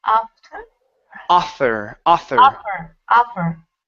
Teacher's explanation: your tongue is between your teeth okay when you pronounce this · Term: th sound